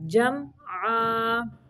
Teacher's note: یہاں پہ میم جو ہے اس کو صرف ظاہر کرنا ہے، یہاں پہ اظہار کا قاعدہ ہے، اظہار شفوی کا۔ میم کو لمبا نہیں کرنا، جم نہیں پڑھنا، پڑھنا ہے جمعا۔